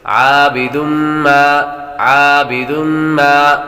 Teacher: تنوین کے بعد میم حروف یار ملون میں سے آ رہے تو غنہ کر کے پڑھیں گے